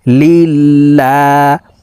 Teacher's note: আল্লাহ শব্দের আগের হরফে জের আছে এই কারণে লাম কে পাতলা ভাবে অর্থাৎ লা বলেই পড়তে হবে